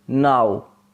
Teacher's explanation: at the beginning the lips are uh almost neutral and at the end there is lip rounding